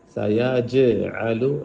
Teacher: جیم پہ جھٹکا دیں